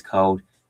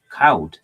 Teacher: Dutch did this interesting thing where they replaced the L sound in certain place by a W sound